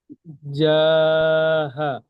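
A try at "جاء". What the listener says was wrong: হা নয়, হামজা জাবার আ। তাহলে বানান করে বলেন একবার। এই যে জিমের টানটা, এই জিমের টানটা কিন্তু দিতে হবে 3 আলিফ পরিমাণ। জিম আলিফ জাবার জা। তাহলে এই যা, এটা কয় আলিফ টান হবে? দুই থেকে তিন আলিফ টানা পরিমাণ টান হবে।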